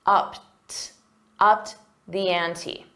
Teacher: And notice that pronunciation, it's a soft T. The ED is pronounced as a soft T